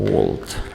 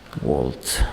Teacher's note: Xo'p, "world" so'zidagi V W kabi yoki arab tilidagi mana bu V harfi bor, bilsanglar, o'sha arab tilidagi "va" degan so'zda, masalan, mana shunday talaffuz qilinadi. Bizdagi V bilan emas, ikkita lab bilan talaffuz qilinadi.